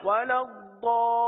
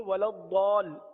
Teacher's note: مد لازم کو 3 4 یا 5 الف تک کھینچ کر پڑھیں گے، تو ضال کو ہم نے کم و بیش 4 الف تک کھینچا ہے